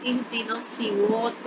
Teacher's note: یہاں پر صاد کو موٹا کر کے پڑھیں گے · را بھی موٹا کر کے پڑھا جائے گا